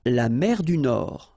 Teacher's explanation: La mer du Nord. Final D not pronounced.